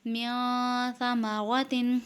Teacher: اس میں نون ساکن کے بعد سا ہے۔ سا حروف اخفا میں سے ہے تو اس میں اخفا ہو رہا ہے، اس میں بھی اخفا کر کے پڑھیں گے، یعنی غنہ کر کے پڑھیں گے